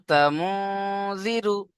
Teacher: নুন সাকিনের আওয়াজকে নাকের মধ্যে তুলে একালিপ চাপতে হবে, কারণ নুন সাকিনের পরে ইকফার 15টি অক্ষরের মধ্যে জাল এসছে এখানে, তাই না?